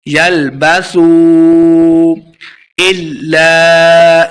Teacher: یلبسوا الا، لام مشدد ہے تو حمزہ کو لام کے سامنے لائیں گے، الف مدہ بھی ہے، اس کو 2 حرکات لمبا کرنا ہے